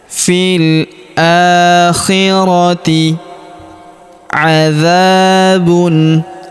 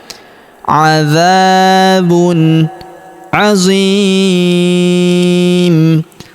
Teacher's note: Huruf dza kita panjangkan dua harakat karena terdapat alif di depannya.